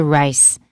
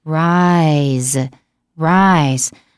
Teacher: 因为 Z 是有声的子音，所以母音要拉长